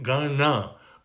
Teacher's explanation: The N in Ganapati is considered to be a retroflex, meaning you roll your tongue back. You're hitting the palate behind the mouth, not right behind the teeth, but almost like you're rolling your tongue back.